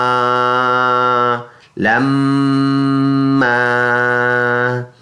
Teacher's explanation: اس میں آواز ناک میں لے کے جائیں گے اور اس کی مقدار ہوگی 1 الف ، یعنی ایک انگلی کو آرام آرام سے کھولنا یا کھلی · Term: غنہ